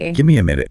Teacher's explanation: you'll notice the T or the V sound just disappears. The M or N sounds kind of take over and carry the rhythm themselves.